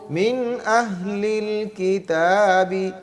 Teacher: من پڑھنا ہے غنہ نہیں کرنا، اس کے بعد حروف حلقی میں سے حمزہ آ گیا